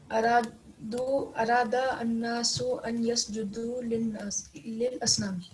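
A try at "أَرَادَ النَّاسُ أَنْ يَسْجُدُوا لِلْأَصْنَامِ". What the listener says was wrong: Lil Asnami, very good.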